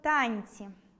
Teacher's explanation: Звук [ц'] м’який, тому попередній [н] також стає м’яким.